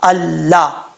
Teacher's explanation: الف لام سے پہلے الف آ جائے، ٹھیک ہے، تو اس کو آپ نے وہیں سے اگر آپ نے شروع کرنا ہو تو اسی لفظ سے یعنی شروع کرنا ہو، جس لفظ کے شروع میں لام اور الف آ رہا ہے تو الف کو آپ نے حمزہ بنانا ہے اور حمزہ زبر پڑھنا ہے۔ لام سے پہلے جب حمزہ الف آتا ہے اس کو حمزہ زبر کے ساتھ پڑھا جاتا ہے، زیر یا پیش کے ساتھ نہیں پڑھا جاتا